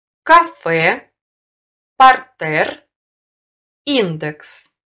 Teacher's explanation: В иноязычных словах с буквой «е» произносится твердый согласный.